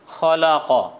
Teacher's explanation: যদি আমরা আকার বসিয়ে দেই আকার বসে তাহলে লা হবে তারপরে কফ এর উপর আকার আছে কা বলিনি বর্ণটি মোটা ক হবে